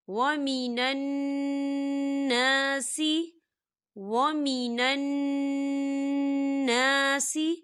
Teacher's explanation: نون مشدد ہے تو یہاں پر غنہ ہوگا، اور الف مدہ بھی ہو رہا ہے، خالی الف سے پہلے زبر ہے تو ہم اسے دو حرکت کے برابر کھینچیں گے۔